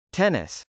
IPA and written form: tˈɛnəs (tennis)